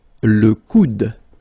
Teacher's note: Okay, remember you don't insist on this final e, it only gives you the sound of d at the end